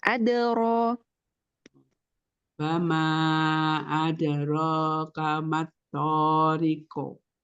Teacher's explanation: tempo qalqalahnya terlalu ini terlalu lama. Jadi ee setengah harakat aja.